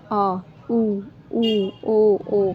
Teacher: जिन स्वरों के उच्चारण में जीभ का पश्च भाग काम करता है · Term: पश्च स्वर